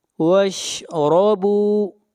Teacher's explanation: را کو موٹا پڑھیں گے، را کے اوپر زبر ہے